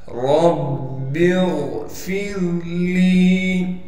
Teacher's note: را کو موٹا کر کے پڑھیں گے اس لیے کہ را پر زبر ہے · را کو ہم با سے ملا دیں گے اس لیے کہ با پر تشدید ہے ، پھر با کے نیچے زیر ہے لہٰذا اب